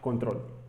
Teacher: es una palabra aguda puesto que termina precisamente con fuerte sonido vocal en su última sílaba en la sílaba troll precisamente tiene el acento prosódico puesto que